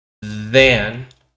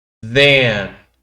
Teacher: Recuerden que para producir el sonido de H, tengo que hacer un sándwich con los dientes arriba y abajo y la lengua y hacer vibrar mis cuerdas vocales al pasar el aire